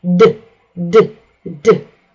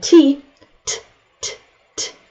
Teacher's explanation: Do you feel the vibrations? D is voiced and T, T, T, T is voiceless.